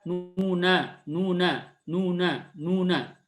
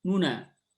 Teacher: yang nu-nya lebih cepat dan lebih kecil suaranya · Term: ikhtilas